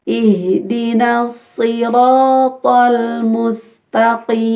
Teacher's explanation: Ihdinas siratal mustaqim. Sirata ya, yang tebal itu ra dan to. Si-nya tebal tapi berkurang sedikit.